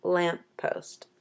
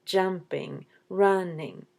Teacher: lamppost puts the stress at the beginning